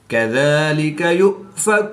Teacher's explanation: حمزہ ساکن ہے تو اس کو ہم جھٹکا دے کر پڑھیں گے۔